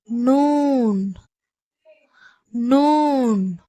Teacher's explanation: நாவின் பின்பகுதி மேல் வரிசை நடுப்பற்கள் நீரைத் தொடும் பொழுது அழுத்தமாக உச்சரிக்கப்படுகிறது அதாவது சிங்கப்பற்களுக்கு மேலே உள்ள முரசுல அழுத்தமாக படும் பொழுது நூன் என்ற எழுத்துடைய உச்சரிப்பு வெளியாகிறது